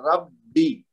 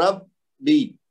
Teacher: ہاں با کے اوپر تشدید ہے نا تو اس کو ہم نے زور دے کے پڑھنا ہے، یعنی ڈبل پڑھنا ہے. رب بی، اس کا مطلب 2 بار با پڑھا جا رہا ہے، ایک دفعہ ساکن ایک دفعہ با کے نیچے زیر ہے.